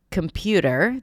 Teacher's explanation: Like we have a primary stress for words, like computer, the pew is the primary stress.